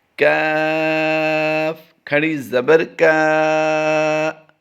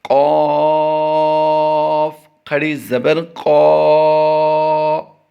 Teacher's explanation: پہلا باریک پڑھیں گے، دوسرا قاف پر پڑھیں گے۔